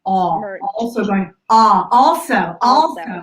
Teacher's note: this aw sound for younger generations of Americans is also going away